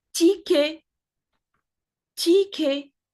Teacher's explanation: Again, we are not pronouncing the T at the end, even though it exists